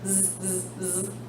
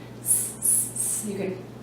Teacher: Z is a voiced sound. Z, z, z. S is an unvoiced sound.